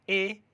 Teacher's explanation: ए जो है वो अ प्लस ई से मिलकर के बनता है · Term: संयुक्त स्वर